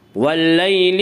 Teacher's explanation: والشفع والوتر واللیل اذا یسر، واللیل یالین، یالین وہ یا جو ساکن ہو اس سے پہلے زبر ہو، یالین کو نرم آواز کے ساتھ جلد پڑھیں گے۔ واللیل اذا یسر الف مدہ، الف مدہ، الف ہمیشہ مدہ ہوتا ہے، الف سے پہلے ہمیشہ زبر ہوتا ہے، الف مدہ کو 1 الف کے برابر کھینچ کر پڑھیں گے۔